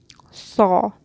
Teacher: you're raising the whole tongue to the top and then you're kind of blowing some air, and that's where the whistle comes in. Even though your whole tongue is raised and then pulled down, you kind of blow some air and you get that effect.